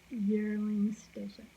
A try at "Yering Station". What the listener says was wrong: Yearing, not with an L.